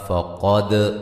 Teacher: قاف کو موٹا، دال پہ قلقلہ